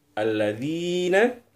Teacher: kemudian ketemu dengan Ya Sukun itu berarti panjangnya dua ketukan atau disebut kita sebut juga Mad Thobi'i